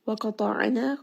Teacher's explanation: Qaf is going to be heavy, Ta is heavy.